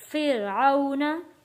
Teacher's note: रॉ को हमने मोटा नहीं पढ़ना क्योंकि रॉ से पहले जेर है, रॉ को पतला यानी कि बारीक पढ़ना है